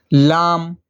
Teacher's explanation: لام کنارہ زبان مسوڑھے سے مل کر لام ادا ہوتا ہے